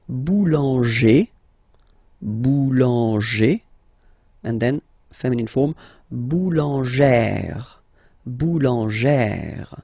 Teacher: Remember, when you've got this E plus this accent grave, you pronounce it like E, really open E sound.